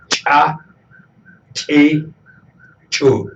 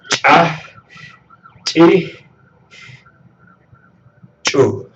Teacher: Este sonido eyectivo que se produce articulando una che castellana. El punto de articulación es para una che castellana, pero hay que obstruir primero, como jalar el gatillo, y luego soltar.